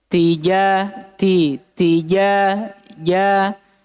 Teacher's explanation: Ta hams berdesis memang, tapi jim ndak.